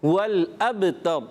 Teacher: با میں کلکلا بھی کرنا ہے اچھے انداز سے